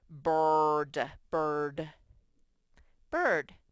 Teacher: The I sort of gets controlled by the R, so you mainly just say the R.